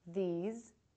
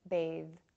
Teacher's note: the voiced TH at is the same as the voiceless TH but your voice is now engaged to make this consonant sound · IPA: /ð/